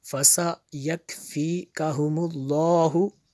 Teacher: یہ لفظ اللہ کو پر پڑھیں گے کیونکہ اس سے پہلے والے لفظ پر کیا ہے جی پیش ہے